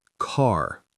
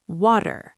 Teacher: It's a very prominent sound. The tongue curls back and you get that characteristic American R. In standard British pronunciation, what's called received pronunciation or RP, the R at the end of words or before consonants is often not pronounced at all.